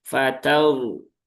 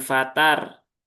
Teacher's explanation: Maka roknya dibaca dengan tafkhim, yaitu dengan cara tebal